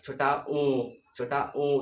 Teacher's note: आपके अंदर का जो जीभ का पिछला भाग है वो थोड़ा सा ऊपर उठ रहा है। जैसे छोटा ऊ ऐसे बोलेंगे ना तो उठ रहा है।